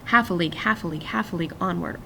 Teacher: one stressed syllable followed by two unstressed syllables. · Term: dactylic